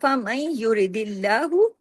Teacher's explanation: نون ساکن کے بعد یا آ گیا نا، ادغام ہو رہا ہے